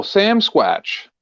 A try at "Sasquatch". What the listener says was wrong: It's Sasquatch, not Sam Squatch.